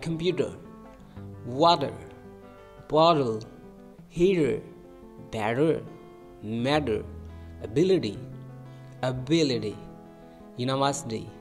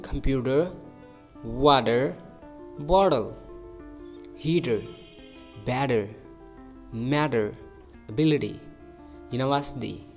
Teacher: When T is between two vowel sound, like A, E, I, O, U, and sometimes the syllable Y, it becomes like a soft D or flap T. A flap, which means the tongue touches the roof of the mouth quickly